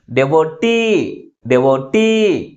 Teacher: last syllable is pronounced with a greater force comparing with other syllables. That's why the primary stress is on the last syllable.